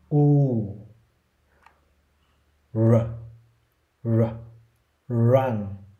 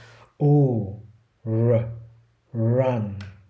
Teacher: cái âm R tiếng Anh ấy nó sẽ luôn luôn ở chu môi đấy. Giả dụ cái từ này này nhiều người sẽ đọc là run run run đấy.